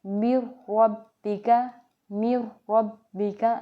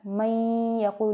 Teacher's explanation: یہاں پہ بالکل نون کی آواز کو کسی طریقے سے بھی ہم نہیں پڑھ رہے، ڈائریکٹ را کو پڑھ رہے ہیں، ڈائریکٹ لام کو پڑھ رہے ہیں، من ربک، من ربک، ٹھیک ہے۔ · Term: بلا غنہ